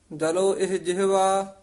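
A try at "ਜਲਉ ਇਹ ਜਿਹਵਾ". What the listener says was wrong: ਜਲੋ ਇਹ ਨਹੀਂ ਕਹਿਣਾ, ਇਹਨੂੰ ਈੜੀ ਲਾਂ ਹਾਹੇ ਲਾਂ ਇਹ, ਈੜੀ ਸਿਆਰੀ ਹਾਹਾ ਇਹ, ਇਸ ਤਰ੍ਹਾਂ ਉਚਾਰਨ ਕਰਨਾ।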